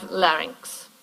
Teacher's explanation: Two syllables, and the second syllable is actually a strong syllable, right? Rynx, short vowel, but a pretty strong coda there, x, yeah?